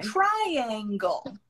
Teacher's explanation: Before A, there is hidden Y sound